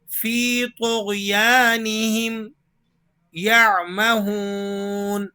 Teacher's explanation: طا اور غین دونوں حروف مستعلیہ میں سے ہیں اور دونوں کو پر کر کے یعنی موٹا پڑھا جاتا ہے